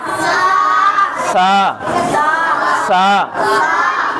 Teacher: जो जबान की नोक है ऊपर के दांतों पे लगानी है, सा। सा का मखरज क्या है? जबान की नोक, सनाया उलिया का किनारा। किनारा ये है, तो बस हल्की से जबान यहाँ टच कर लो, सा अपना आप निकल जाएगा।